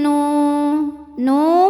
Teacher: karena ada wau sukun didahului baris damah maka panjang nunnya dua harakat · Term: Mad